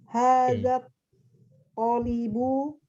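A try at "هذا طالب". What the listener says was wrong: Benar. Hadat tolibu sahih.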